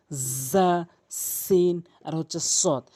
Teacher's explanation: জিহ্বার আগা উপরে নিচে দুই দাঁতের মাঝখান বা দুই দাঁতের আগা